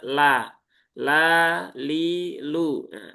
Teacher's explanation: Jadi nempelnya memang tidak di gusi karena gusi itu kan untuk huruf ta, huruf dal dan huruf th. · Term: lam